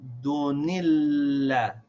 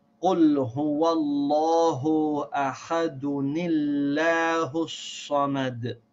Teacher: So I will say ahadunillah. I'm going to read that noon sound from the tanween with the kasra. I say dunillah.